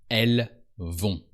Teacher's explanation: Here the t, is really silent, as always, and the n is used to turn the o into on.